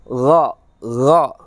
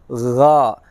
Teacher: Bukannya go ataupun yang lainnya, tapi berusahalah untuk membaca atau menyebutkan gha. Suara terdengar seperti dari pangkal belakang bagian atas dari tenggorokan kita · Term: huruf gha